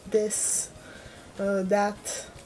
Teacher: It's more like a TH sound, broth, but I'm not used to making that sound. Even if I say like this, that, I say more like a D.